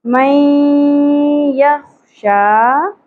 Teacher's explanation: خا پر ہوگا خراج کا ایلیمنٹ کلیئر ہونا چاہیے من یخشا شین کے اوپر کھڑی زبر ہے ایک الف کے برابر کھینچیں گے